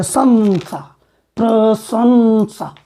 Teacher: अब दंत स होने के नाते इस अनुस्वार का जो दंत से बोला जाएगा अनुनासिक व्यंजन, उसी का उच्चारण किया जाएगा। तो स से बोला जाता है न, दंत से।